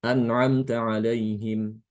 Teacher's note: Ini alaihim ini kalau mau disambung harus disilahkan ya. Tapi kalau mau diwakafkan sama seperti Imam Hafiz, disukunkan. Mimnya disukunkan.